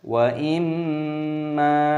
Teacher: ada mim tashdid, ini dilantunkan terlebih dahulu, ghunnah, lalu panjangkan mim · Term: digunnahkan